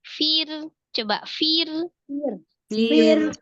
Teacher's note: Fa-nya dia alhams. Ada ro sukun sebelumnya kasrah di huruf fa, ro-nya dibaca tipis.